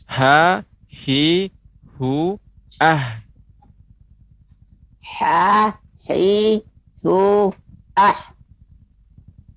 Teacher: Jadi H besar itu berada di bawah, ya. Di bagian tenggorokan bawah.